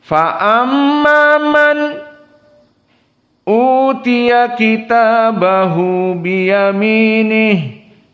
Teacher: Maka qiraah Hamzah di sini berbeda dengan yang lainnya. Dikarenakan pertemuan nun dengan Hamzah, maka disaktah.